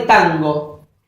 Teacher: un proceso que convierte a la consonante nasal en una nasal pronunciada en la zona velar de la boca. Velar sería acá.